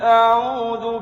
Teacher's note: اعوذ میں عو جو ہے واو ساکن سے پہلے پیش ہی واو مدہ ہے، اس کو ایک الف یعنی 2 حرکات تک لمبا کر کے پڑھیں گے